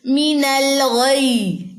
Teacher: یا جزم، دو ہے نا یہاں پہ لیٹر ہمارے پاس، تو ہم یہاں پہ نبر کریں گے، آواز کو تھوڑا سا بلند کریں گے تاکہ یا جزم ابھر سکے